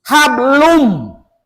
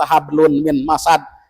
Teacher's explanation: n-nya tuh tukarkan ke mim jadi jangan ada n langsung ke m